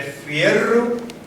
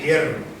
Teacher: Que esta F, que se pronuncia con los labios, con los dedos, se aspiró de fierro a hierro